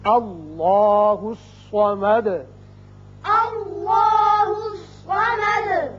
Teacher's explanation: صاد حروف مستعلیہ میں سے ہے، یہ پر ہوگا. اب دال کے اوپر پیش ہے، آیت ختم ہونے کی وجہ ساکن کریں گے اور سکون کی وجہ سے صفت قلقلہ ادا ہوگی.